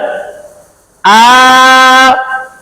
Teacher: এক আলিফ টানিয়া পড়তে হয় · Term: খারা জবর